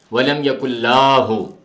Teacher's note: لام کے اوپر جو زبر ہے اس کو کھینچ کے پڑھ دیتا ہے